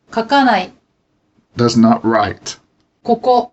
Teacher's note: unaccented ka and ko at the beginning of a word are often unvoiced when followed by the same syllable